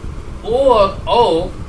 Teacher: ये दो वर्ण ओ और औ, ये दो वर्ण बंधुओं कंठोष्ठ, इनका उच्चारण स्थान कंठोष्ठ है